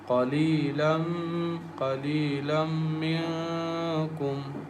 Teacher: There is a noon tanween is followed by meme, and meme is one of the merging letters, so we merge noon tanween into meme and recite with nasal sound